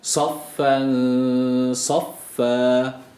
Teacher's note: şeddeyi abartmıyoruz sadece iki kere okuyoruz F harfini